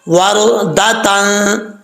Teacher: را ساکن سے پہلے زبر اور پر پڑھا جاتا ہے